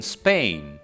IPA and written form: speɪ̆n (Spain)